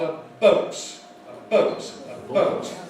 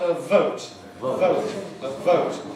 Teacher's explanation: the two lips compared with the lip and the teeth